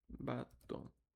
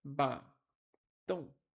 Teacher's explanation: A palavra é oxítona, pois a última sílaba é pronunciada com maior intensidade.